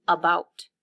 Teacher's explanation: When I say the first syllable, it's a little quieter, and the stress is on the second syllable